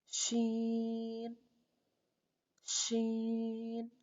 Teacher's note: شین بھی 3 حرفی حروف میں سے ہے اور شین باریک حرف ہے۔ شین کو ادا کرنے کے لیے درمیان زبان کو درمیان تالو سے لگا کر باریک آواز میں ادا کریں